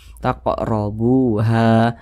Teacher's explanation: Sehingganya ha dibaca panjang karena memiliki tanda baca fathah, berposisi tepat berada di belakang huruf alif. Ini mad tabi'i, panjangnya 2 harokat atau kira-kira 2 ketukan.